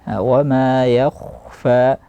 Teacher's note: Di sini ya-nya harus tipis, kha-nya yang tebal.